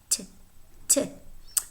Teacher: Next, we have the voiceless alveolar stop